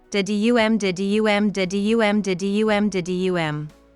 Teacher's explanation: each line has 10 syllables following an unstressed stressed pattern